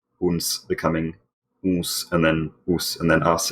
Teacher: a nasal consonant, like “n” is lost if it comes after a vowel and before a fricative consonant. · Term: nasal spirant law